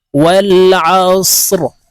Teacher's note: ওয়াল আসরি, র কে ওয়াকফের ক্ষেত্রে সাকিন করে ফেলবো, এখানে এইভাবে থামবো আমরা।